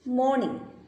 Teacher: The initial, middle and final sounds in the word morning are nasal sounds.